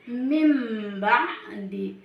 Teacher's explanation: Iklab adalah apabila nun mati atau tanwin bertemu dengan huruf ba, maka kita harus merubah bunyi bacaan nun mati atau tanwin menjadi bunyi mim mati